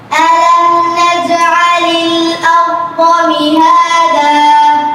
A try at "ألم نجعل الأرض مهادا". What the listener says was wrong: কলকলায় আর একটু শক্তি যোগ করতে হবে نج نج ألم نجعل الأرض مهادا